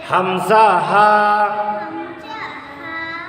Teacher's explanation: এক নাম্বার মাখরাজ হলকার শুরু হইতে